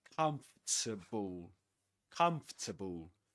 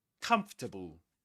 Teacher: the main stress goes on the first syllable